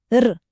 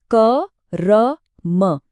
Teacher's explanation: ये र स्वर रहित होता है, मतलब इसमें अ की आवाज नहीं होती। ये बस एक हल्की सी तेज आवाज है, र, बस इतनी सी। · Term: रेफ